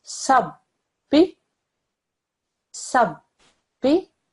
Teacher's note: notice I pressed down on the ba and I didn't rush through it